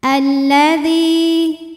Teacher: lam yang sukun tidak dibaca lam kedua dibaca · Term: alif lam syamsiah